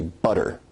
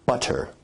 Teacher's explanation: notice where we write it with two T's in English that your tongue is producing a tap sound there rather than a full stop or plosive sound · in received pronunciation where you say butter, that involves a full T stop